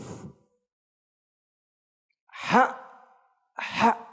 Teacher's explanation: Keluarnya huruf ha daripada paling belakang, dari pangkal tenggorokan, dan huruf yang paling terakhir yang keluar daripada makharijil huruf di dalam huruf hijaiyah.